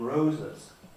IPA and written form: ˈrəʊzəz (Rosa’s)